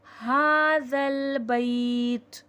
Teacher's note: ذال نرمی والا حرف ہے، نرمی سے پڑھا جائے گا، اس میں سختی اور سیٹھی نہ آئے